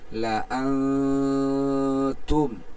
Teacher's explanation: যেহেতু নুন সাকিনের পরে তা আসছে, একবারে গুন্না হবে, সেই হিসেবে আমরা গুন্না করতেছি, লা আনতুম।